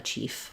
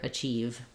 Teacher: make sure that you have the V sound. It's voiced at the end there. Don't let it become a chief, but rather achieve.